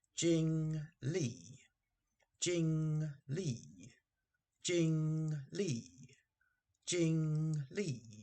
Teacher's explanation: we have first tone and fourth tone